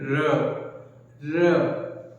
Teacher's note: जब हम र का उच्चारण करते हैं तो कहीं ना कहीं कंपन सा महसूस होता है, एक झंकार टाइप का महसूस होता है। कंपन से उच्चारित होने वाला वर्ण या लुढ़क कर जिस वर्ण की ध्वनि बाहर निकलती है बोलते हैं र। · तो इसलिए इसे लुंठित वर्ण कहते हैं क्योंकि इसमें हमारा जीवा क्या होता है, मुड़ जाता है और कंपन के साथ आगे की ओर लुढ़कता है, इसलिए बोलते हैं इसको प्रकंपित या लुंठित वर्ण।